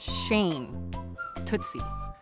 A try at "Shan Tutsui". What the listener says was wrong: Not Shane, Shan.